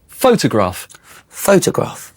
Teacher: Photo is short for photograph, and the stress is on the first syllable.